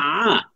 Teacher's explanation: আইনের উচ্চারণটা কিন্তু গলার মাঝখান থেকে